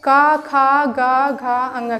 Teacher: का वर्ग का उच्चारण जो है कंठ से होता है।